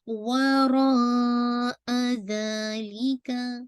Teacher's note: वाव रा हमज़ा इसका root word है ना, तो अब आप इसको जिसे कहते हैं स्ट्रेच करेंगे टिल 4 टू 5 काउंट, और ये मद्दुल वाजिब मुत्तसिल है क्योंकि अटैच है हमज़ा, मतलब अटैच मद है, वाजिब है, इसको आप 4 टू 5 स्ट्रेच करेंगे।